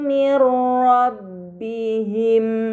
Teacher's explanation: nun sukun dibaca secara melebur tanpa gunnah yang dipanjangkan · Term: idgham bila gunnah